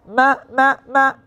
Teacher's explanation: যখন আমি বলবো না না না, খেয়াল করেন, নাক থেকে আসছে, অথবা মা মা মা, নাক থেকে আসছে। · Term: গুন্না